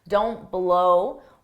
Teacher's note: drop that t so you don't take a pause